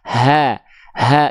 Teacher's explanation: cukup dilafalkan ringan dari tenggorokan paling bawah ha ha enggak perlu ha enggak perlu dari Dada ya tidak